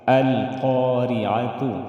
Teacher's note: قا قاف کو موٹا ادا کریں گے ریعہ را کو باریک ادا کریں گے را کے نیچے زیر